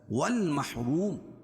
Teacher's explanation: الف لام کے بعد حروف قمری کے 14 حرفوں سے میم ہے تو یہ لام پڑھی جائے گی. روم واو ساکن سے پہلے پیش ہو تو واو مدہ اور را کے اوپر زبر یا پیش ہو تو را پر ہوتی ہے.